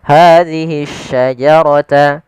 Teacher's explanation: Hadhihi syajarata sama di sini ada alif lam, tapi di sini alif lamnya alif lam syamsiyah, yaitu alif lam yang kita tulis dan tapi kita tidak anggap lamnya, sehingga dia langsung diidghamkan ke huruf shin menjadi shin yang berharakat tasydid.